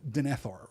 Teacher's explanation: We're supposed to give it that, like, second syllable accent that we give to elven names